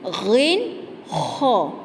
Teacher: Seterusnya di bahagian hujung kerongkong, di mana kita perlu menyebut dengan huruf ghain dan kha. Sebutan tersebut akan sedikit berkahak kerana kita menyebutnya di bahagian hujung kerongkong dan sedikit menekan.